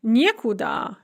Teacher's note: We have не instead of ни, and the stress is on the не.